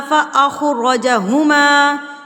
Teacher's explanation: ख़ा और रा दोनों पुर हो के अदा होंगे